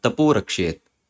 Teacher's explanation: तो अह बदल के ओ हो जाता है मृदु व्यंजन के सामने। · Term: उकार संधि